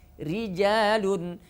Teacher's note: kalau berharakat kasrah ro menjadi tarqik